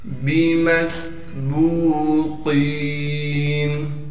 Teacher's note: با کے بعد واو مدہ ہونے کی وجہ سے با کو 1 الف کی مقدار کھینچیں گے۔ قاف کو موٹا کر کے پڑھیں گے، اور قاف کو آگے یا مدہ سے ملا دیں گے۔ یا مدہ ہونے کی وجہ سے قاف کو 1 الف کی مقدار کھینچیں گے۔